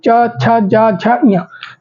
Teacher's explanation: च वर्ग जिसका उच्चारण हमारे तालु से होता है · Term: तालव्य